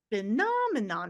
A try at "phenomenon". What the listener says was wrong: Remember, make your pitch go higher. Phenomenon.